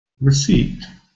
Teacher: in clear alphabet you can see very clearly the first syllable is weak